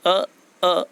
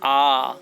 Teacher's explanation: जब अ को बोलते हैं तो हमारा मुंह थोड़ा सा खुलता है, परंतु जब इसको दुगुना बोलते हैं अर्थात मुंह को ज़्यादा खोल करके बोलते हैं तो अ की जगह वह आ बन जाएगा। अ बराबर आ।